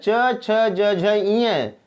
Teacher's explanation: जीवा हमारी कहाँ टकरा रही है, तलवे के पास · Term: तालव्य